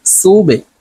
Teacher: বা কলকলার হরফ নিচের দিকে ধাবিত করে ধাক্কা দিয়ে উচ্চারণ করতে হবে